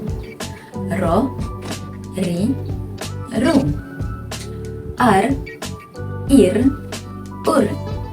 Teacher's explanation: ada berlaku Getaran yang halus dan kita akan dapat merasakan getaran tersebut